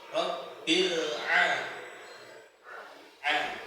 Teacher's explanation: Setelah itu huruf ain. Jadi huruf ain itu letaknya tenggorokan bagian tengah nggih. Bukan bagian paling bawah.